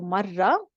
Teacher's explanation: Notice that typically we do not pronounce the round ta at the end. However, over here we're going to pronounce it because it's there are other letters after it.